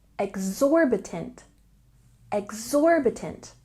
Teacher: we have a stress here on the second syllable